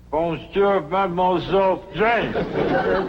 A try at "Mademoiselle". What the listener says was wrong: That's very good. Except for the mwah. It must be soft. Mwah. Watch my lips closely. Mwah.